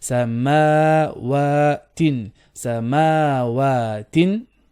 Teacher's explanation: both ma and wa, both have a standing fatha, so both have 2 beats, so make sure you do same length